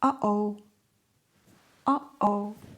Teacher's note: Uh-oh. Notice the little stop in the middle? That tiny interruption is called glotal stop.